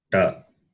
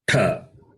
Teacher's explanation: The first letter ta, simple ta, Alpa Prana. The second letter is tha, Mahaprana.